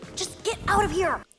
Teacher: hear she emphasized the word out just get out of here the T sound in get is a stop te we don't actually hear it